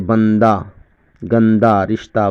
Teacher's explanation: ہائے مختفی اس کی آواز الف کی طرح معلوم ہوتی ہے، جیسے بندہ، گندہ، رشتہ وغیرہ وغیرہ۔